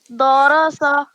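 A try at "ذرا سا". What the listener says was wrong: دوہرا سا نہیں، درا سا. صرف را کو موٹا پڑھیں گے. درا سا.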